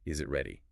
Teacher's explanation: For rising intonation, take a simple yes no question like, "Is it ready?" and repeat it several times each time, exaggerating that upward lift at the end